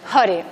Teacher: la R en sánscrito siempre es suave, es como la R del italiano di Roma, nunca es re, sino re, por tanto esto es hare.